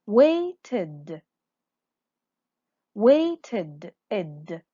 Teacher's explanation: We read it or we pronounce it id when the verb is ending with one of these sounds, t or d.